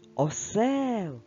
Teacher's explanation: наголос на другому складі